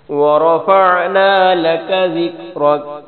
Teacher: ذکر، را کو پھر موٹا پڑھیں گے